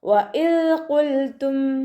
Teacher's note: ദാലിൻ്റെ മഹ്റജ് നമ്മുടെ നാവിൻ്റെ അറ്റവും മേലെ മുൻപല്ലിൻ്റെ അറ്റവും ചേർന്നിട്ടാണ് പുറപ്പെടുന്നത്. സൗണ്ട് ദാലായി പോവാതെ ശ്രദ്ധിക്കുക, ലൈറ്റാക്കി കൊടുക്കുക കേട്ടോ.